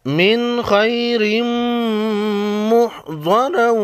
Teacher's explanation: نون ساکن کے بعد حروف خلقی میں سے خا آئی ہے یہاں پر اظہار خلقی ہوگا